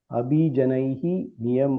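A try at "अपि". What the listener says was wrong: Not Abhi, it is Api. Api is also, not Abhi.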